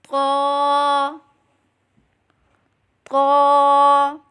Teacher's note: जुबान की नोक और ऊपर के दांतों की जड़ से अदा करें · زبان کی نوک اور اوپر کے دانتوں کی جڑ سے ادا کریں